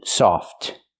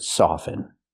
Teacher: But with soften, we do not pronounce the T. Never pronounce the T in the word soften. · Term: the T is silent